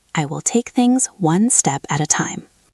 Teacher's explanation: We don't emphasize every word equally. We emphasize one step and time.